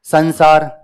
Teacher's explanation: न की ध्वनि आती है, नाक में से आवाज आती है, तो अधिकांश ध्वनि न की ही आया करती है या नाक में से ही आया करती है, क्योंकि अनुनासिक वर्ण है। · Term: अनुस्वार